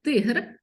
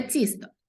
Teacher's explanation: буква Т позначає твердий приголосний звук т і М'який приголосний звук ц